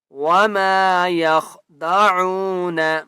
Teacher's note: عین کو ایک الف کی مقدار کھینچ کر پڑھیں گے